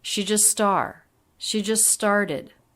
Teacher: words linked together with a single s sound she just started she and just low in pitch flatter compared to star